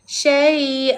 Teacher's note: kena lembut pada huruf ya. Juga panjang dua harakat. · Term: mat lin